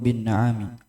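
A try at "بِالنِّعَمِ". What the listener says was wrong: Apa bilang situ? Fathah atau kasroh? Hah? Pakai kasroh, bin ni'ami.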